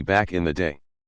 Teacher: there are two stress syllables on back and day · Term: stressed syllables